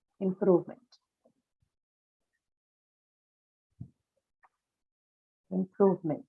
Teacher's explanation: Improvement comes from the verb improve yeah and uh it is stressed on the second syllable